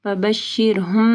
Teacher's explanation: میم ساکن کے بعد با ہے، یہاں پہ جو ہے اخفاء الشفوی آ رہا ہے، ٹھیک ہے، غنہ ہوگا